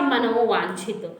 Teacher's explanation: वा आया है तो आपका ये ओ में बदल जाएगा